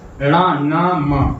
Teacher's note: वो कौन से, रणा, आप बोल के देखिए रणा, तो आपके थोड़ा नाक पे जोर पड़ रहा है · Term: नासिक